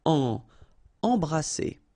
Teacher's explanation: All right, M here, and then you've got a consonant after, so you get the nasal en. So you don't hear any M, it's really in your nose